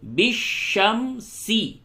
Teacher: یأتی بالشمسی، بالشمسی، پہلے بڑی شین اس کے بعد چھوٹی سین، چھوٹی سین میں سیٹی کی آواز نکلتی ہے